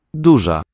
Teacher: the Z with a dot over it, also retroflex, but just a fricative